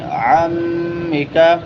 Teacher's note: عمک میم مشدد ہے، غنہ ہوگا